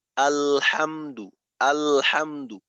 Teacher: তো এইখানে লামের উচ্চারণটা চালু থাকতে থাকতেই হার উচ্চারণটা হবে। তো এইখানে এমন কোনো সময় পাওয়া যাবে না যে সময়টা আওয়াজ বন্ধ।